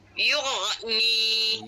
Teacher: lidah kita yang menghala ke langit dia bukan menghala ke rengkung kalau rengkung jadi ain >> yugni dia tak pi sampai rengkung lag dia kat langit dia >> yugni Yughni jangan tekan >> yugni. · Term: huruf ghain